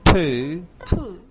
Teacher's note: makes much stronger and breathy sound than mu and boo.